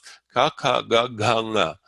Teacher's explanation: Your tongue is touching the top of your mouth all the way in the back. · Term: velars